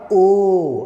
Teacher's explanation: ओ ऐसे बोलते हैं, ओ तो कंठ से निकलता है और ओष्ठ के यानी कि होठ के सहायता से उसका उच्चारण होता है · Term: कंठोष्ठीय वर्ण